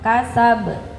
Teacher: Nah, harus kedengaran banyak. Itu namanya qalqalah kubra.